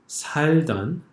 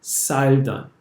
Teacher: the S sound that you see in this, the second word of the first line, 살던, is much softer than the English S